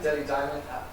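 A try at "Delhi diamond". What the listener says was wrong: That's because you're not sounding the H.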